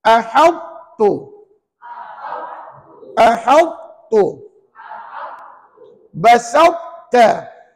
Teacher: Huruf ta dibaca tebal tetapi tidak melantun.